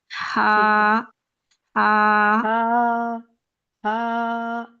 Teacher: हा को अपने हलक के दरमियानी हिस्से से फील करना है